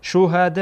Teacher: مد متصل هست، یعنی به اندازه 4 حرف مد میکشین، صدا طولانی میکنین